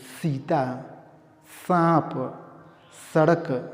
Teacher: लिए स क्या है दंत है तो दांत का सहारा लेंगे तो ये जो जीभ है इसको लाना पड़ेगा दांत पे दांत से टकराना पड़ेगा